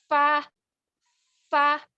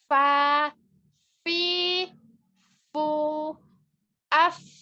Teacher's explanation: Keluar dari fa yaitu bibir bawah, bagian dalam atau bisa kita sebut yang basah, bertemu dengan ujung gigi seri atas. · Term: huruf fa